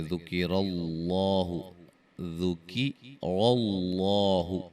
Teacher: ذکر اللہ، ذکر اللہ، را بھی موٹی ہو رہی ہے اور لفظ اللہ کا لام بھی موٹا ہو رہا ہے